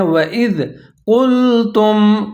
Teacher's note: قاف کے اوپر پیش ہے اور قاف کو موٹا کر کے پڑھنا ہے۔ لام کے اوپر ساکن ہے، قاف پیش لام، قل تا پیش میم تم، قُلْتُمْ۔